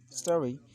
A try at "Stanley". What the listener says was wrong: You're kind of pronouncing this word as Stally, but the word is Stanley. Stanley.